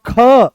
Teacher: जैसे ही ख बोलते हो तो पूरे कमर तक इसकी दम निकलता है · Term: महाप्राण